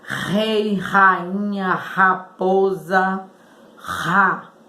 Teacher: No início sai forte, quando ele tem os dois R's, sai com um som mais forte e a gente sente esse tremor na garganta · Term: entonação do R